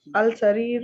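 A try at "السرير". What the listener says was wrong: دیکھیں السریرو نہیں پڑھیں گے, السریرو نہیں پڑھیں گے, لام کو سکپ کریں اور سین پہ جائیں سیدھے. دیکھیں کبھی لام پڑھا جاتا ہے, کبھی نہیں پڑھا جاتا.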